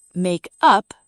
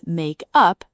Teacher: the stress is on up, make up, two words phrasal verb